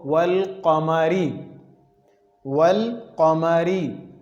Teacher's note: اس کے علاوہ مثال والقمری، یہاں پر یہ الف لام ہے اور الف لام کے بعد آپ کے سامنے یہ قاف آ رہا ہے، تو یہ ظاہر کر کے پڑھیں گے الف لام کو